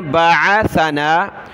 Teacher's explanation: عین نکالیں گلے سے، سا پر زبان نکالیں